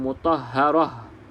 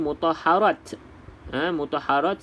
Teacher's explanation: berhenti kena bunyi huruf ta ni seperti Huruf Ha